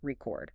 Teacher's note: the stress is on the second syllable, record. But if it's a noun, I'm listening to a record, the stress is on the first, R-E-C-O-R.